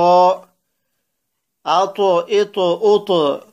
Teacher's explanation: تو اس کو جب ہم پڑھیں گے تو آواز کو ہلا کر پڑھیں گے اق، جس طرح گیند جو ہے وہ ٹکرا کر واپس آتی ہے، بالکل اسی طرح ہم نے قاف کو جو ہے وہ ہلا کر پڑھنا ہے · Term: قلقلہ